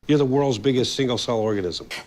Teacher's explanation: sounds more like biggest you're the world's biggest single cell organism the S then links to the next word starting with another s in single